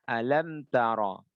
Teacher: Mim sukun bertemu dengan ta, harus baca idhar. Alam tara. Enggak boleh kita baca alam tara, dengung. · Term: idhar syafawi